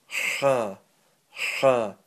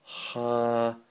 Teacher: This letter is from the middle of your throat, and you're pushing out air from the middle of your throat, and it's not slowly you're pushing it out, it's a burst of air, quick burst of air.